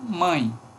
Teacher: tem uma vogal seguido de uma semivogal essa vogal é nasal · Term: ditongo nasal decrescente